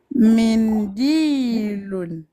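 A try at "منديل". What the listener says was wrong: Très bien.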